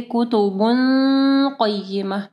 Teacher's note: قاف ہیوی ہے تو غنہ بھی ہیوی ہوگا · تنوین کے بعد قاف ہے، ٹھیک ہے، یہاں پہ جو ہے اخفا غنہ ہوگا